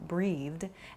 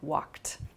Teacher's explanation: a soft d sound like breathed, and then a more hard t sound like walked